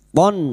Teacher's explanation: Fathah tanwin bertemu hamzah idhar halki, fathah tanwin dibaca jelas tanpa mendengung. Walutan idz qala liqaumihi, idz huruf dzal sukun jangan dipantulkan ya, bukan qalqalah.